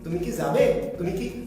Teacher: অর্থাৎ কিটাকে দ্রুত তাড়াতাড়ি শেষ করে করতে হবে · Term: হ্রস্বস্বর